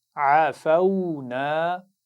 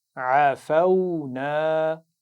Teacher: یہ الف مدہ ہے تو کھینچ کر پڑھا جائے گا